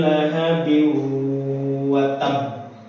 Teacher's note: Harus ditahan, bukan watab, bukan, tapi harus ditahan karena tasdid harus ditahan